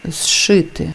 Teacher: ЗШ СШ звучить як довгий ш